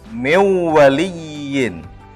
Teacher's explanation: Bukan membacanya min waliyin, tapi nunnya kita masukkan dengan waw. Jadi miwaliyin. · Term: idgham bigunnah